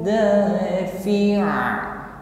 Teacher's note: Fi'a, huruf fi tidak dipanjangkan. Fi tidak, pendek saja, langsung disukunkan pada huruf ain.